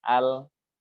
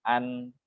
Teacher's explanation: jadi beda ya dengan al, al paling pucuk ya, an agak masuk